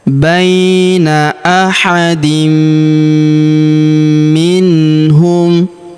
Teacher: Kemudian tanwin in huruf din bertemu huruf mi berharakat tasydid maka tanwin innya melebur ke huruf mi kita tahan dan kita tekan serta kita dengungkan dua sampai 3 harakat